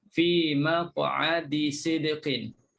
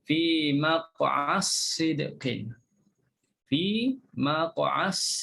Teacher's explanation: Kita jangan sebut dal, kita terus sebut sad. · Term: idgham